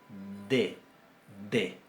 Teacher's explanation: La segunda es un poco más fuerte, es oclusiva.